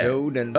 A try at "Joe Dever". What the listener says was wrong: Oh no, it's Joe Devers. There's no N. Joe Devers.